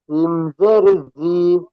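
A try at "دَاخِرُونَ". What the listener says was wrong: নয়, খ, খ জের খি। খি কে টান দেবেন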